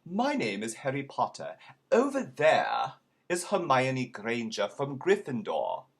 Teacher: i left off all those r's